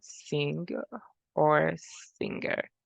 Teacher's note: As I like to describe it, like for me to reference to this sound, it's like and then energy together, like when we say sing or singer, it is a voiced velar nasal sound.